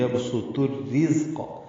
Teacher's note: یہ ادغام شمسی ہو رہا ہے تو را سے مل رہا ہے، الف لام نہیں پڑھے جا رہے. را باریک ہے کیونکہ اس کے نیچے زیر ہے، اس کو زا سے ملائیں گے.